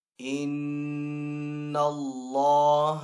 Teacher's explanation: ویسے لام جو حرف ہے وہ باریک حرف ہے، لیکن جب لام اللہ عز و جل کے نام کے اندر آئے گا اور اگر اس سے پہلے والے حرف کے اوپر زبر ہوگی تو پھر اس لام کو ہم پر پڑھیں گے، تو یہاں پہ اللہ عز و جل کے نام کو ہم پر یعنی تھوڑا سا بھاری آواز سے ادا کریں گے۔ اور یہاں پہ لام کے اوپر کھڑا زبر بھی ہے، تو یہاں پہ اس کو ایک الف دو حرکات کے برابر کھینچ کر بھی ادا کریں گے۔